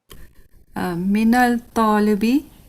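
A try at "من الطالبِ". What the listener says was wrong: Minat talibi. Minat talibi, sister. Why? Because this is from Huruf Shamsiya. This is from Huruf Shamsiya. Okay. So you will not pronounce lam here. Minat talibi.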